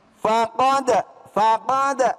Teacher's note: maka di situ dibaca qalqalah Ya kudu mantul ya kan